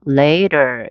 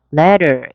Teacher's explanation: 모음과 모음 사이 T 사운드가 부드럽게 리을처럼. 그래서 letter가 아니고 letter.